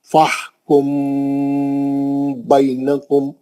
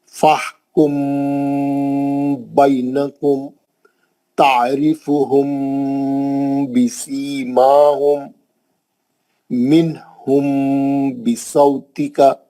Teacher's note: میم ساکن کے بعد با آئیں گا، آپ غنے سے پڑھیں گے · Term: غنہ